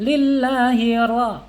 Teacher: Ketika baca ra berarti lidah kita harus condong ke dalam. Dan bergetarnya tidak boleh lebih dari 3 ya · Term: inhirab